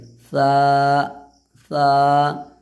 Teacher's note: सा इस तरीके से अदा होगा कि ज़बान का जो नोक है ना उसको ऊपर में सटाना है दांत में थोड़ा सा